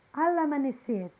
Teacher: Pronunciadas juntas fica al amanecer. A letra L de al se une com o A de amanecer.